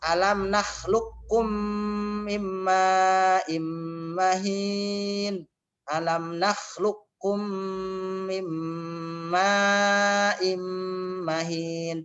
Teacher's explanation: Alam nakhluqkum mimma immahin, tidak dikol-kolahin qafnya. Jadi diidghamkan qafnya ke huruf yang kedua. Dimasukkan qaf yang sukun ke dalam kaf, huruf kaf.